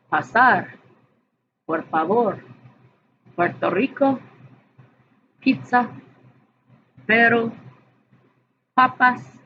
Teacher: In Spanish, there is no puff of air.